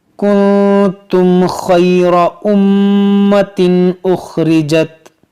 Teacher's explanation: یہاں پر نون ساکن کے بعد تا ہے، یہاں پر اخفا ہوگا